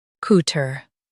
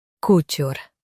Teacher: In US, stress tur. In UK, stress ture.